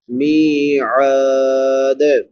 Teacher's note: میم کے بعد یا مدہ ہے اور عین کے بعد الف مدہ ہے تو دونوں کو ایک ایک الف کے برابر لمبا کر کے پڑھیں گے